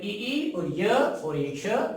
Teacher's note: तालव्य कहलाते हैं। चवर्ग और ई और य और श ये तालु से बोले जाते हैं।